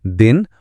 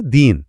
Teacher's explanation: अगर आपने दिन को खींचकर दीन बोल दिया तो मतलब ही बदल गया।